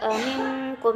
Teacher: nun mati bertemu qaf, sama hukumnya adalah ikhfa samar